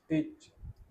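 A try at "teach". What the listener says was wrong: नहीं, इसमें भी हमें खींचना है, टीच। क्योंकि आपने ये देखिए, मैंने लिख भी रखा है, आपने बोला था टिच। इसको, इसमें बड़ी ई की लगेगी, टीच। ये है ना, इस तरह से बोलना है, खींचना है।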